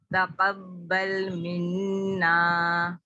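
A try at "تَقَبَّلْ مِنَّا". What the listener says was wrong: ऑफ को पुर कीजिए। तक़ब्बल मिन्ना, तक़ब्बल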